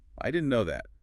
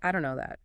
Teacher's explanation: That didn't can get really reduced. Sometimes it's sounding like din or dn, especially before no. And know that links up. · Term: didn't reduction